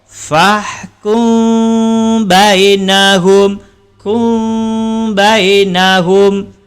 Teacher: Bila mem mati itu bertemu ataupun berjumpa dengan huruf ba. Cara bacaannya dengung dan bibir tidak rapat.